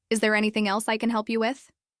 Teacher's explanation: he asked with a natural rising tone